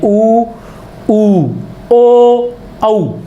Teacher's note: इनके उच्चारण में ओष्ठ जो होते हैं वो वृत्ताकार हो जाते हैं।